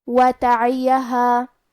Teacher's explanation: وتعیہا، الف پہ مد کا علامہ ہے، یہ مد جائز منفصل ہے تو ہم اپنی آواز 2 سے 4 مد کے برابر لمبی کریں گے